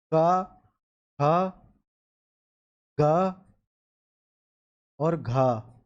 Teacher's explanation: कंठ की सहायता से बोलने वाले शब्द होते हैं